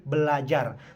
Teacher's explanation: yang seharusnya menjadi berajar namun di sisi bunyi R disimilasikan dengan bunyi l sehingga menjadi Belajar